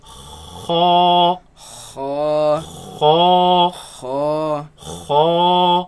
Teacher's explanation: So the root of the tongue raises against the uvula, and the commotion is what makes this sound. Now it should be a soft sound.